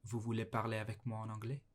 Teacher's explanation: Гэхдээ сүүлд нь өргөлт өгөөд хоолойныхоо өнгөөр асуултыг бас асууж болно.